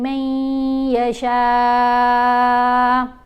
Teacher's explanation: شین کے اوپر یہ جو مد ہے اس کو 5 الف کی مقدار جتنا ہم لمبا پڑھیں گے